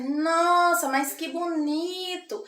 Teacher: mas que bonito é um pouquinho mais a nasala anasalado né o som sai um pouquinho mais pelo pelo nariz e um pouquinho mais lento